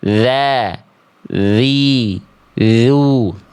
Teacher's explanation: Kalau huruf dzal dia tipis, pangkal lidahnya tidak naik.